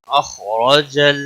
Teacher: اخرج خا حروف مستعلیہ میں سے ہے، پر پڑا جائے گا، را زبر کی وجہ سے پر پڑا جائے گا